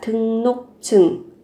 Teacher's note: R mới đổi thành N. Và cái phụ âm chờ này gấp đôi lên, 등록증 là thẻ đăng ký 외국인, người nước ngoài.